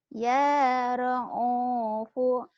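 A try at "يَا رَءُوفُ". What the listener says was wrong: Ya ra'u. Jangan ra'u. Itu bukan ain. Itu hamzah. Ya ra'ufu.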